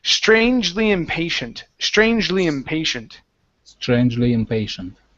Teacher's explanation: moving from a J sound to an L